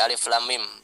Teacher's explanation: Alif la-nya 6, amnya ya, mim bertasydid gunnah, dengung yang lama tahan 3. Lamnya 6, amnya 3, mimnya 6 lagi. Jadi la alif lam, la-nya tuh jadi mat lazim musaqal harfi, karena setelah lam ada mim bertasydid, ada tasydid di mimnya.